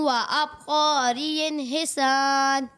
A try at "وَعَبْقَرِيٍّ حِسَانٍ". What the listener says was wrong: اچھی کوشش کی آپ نے, لیکن یہ وعبقري نہیں ہے, ٹھیک ہے, وعبقري حسان. اور یہاں عین لکھا ہوا ہے, ٹھیک ہے, تو اسے حمزہ کے مخرج سے نہیں پڑھنا.